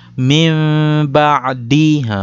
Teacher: Kita membunyi huruf nun ni kita tukar bagi jadi bunyi huruf mim. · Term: iqlab